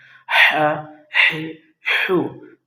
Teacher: ح حلق کے درمیانی حصے سے ادا ہوتا ہے